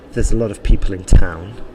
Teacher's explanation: the stress there was probably in people and in town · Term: sentence stress